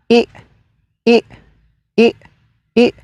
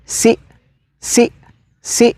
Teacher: El cuarto sonido que tiene la I es la vocal glotalizada, es decir, le vamos a cortar el sonido la I por el apóstrofo que nos indica que se corta su sonido.